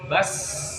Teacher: kondisi sukun sin itu harus keluar sifat sofirnya, bas.